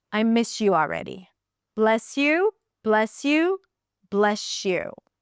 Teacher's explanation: So the s, yeah, it turns into sh.